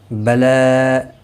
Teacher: لام کے اوپر کھڑی زبر ہے، ایک الف کی مقدار کے برابر کھینچ کر پڑھیں گے